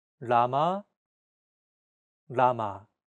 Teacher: your tongue should strike the gum Ridge behind your upper teeth in a quick rapid motion